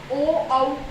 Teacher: ओ औ कंठोष्ठ यानी कि ओ और औ का उच्चारण स्थान क्या है, कंठोष्ठ है। कंठ और होठों से होता है, क्यों, क्योंकि ये भी दोनों क्या है, संयुक्त स्वर है।